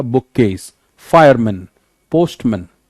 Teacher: each element retains its original pronunciation and the first element has a slightly heavier stress